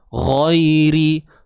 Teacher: Huruf ghain, hujung kerongkong kita ni.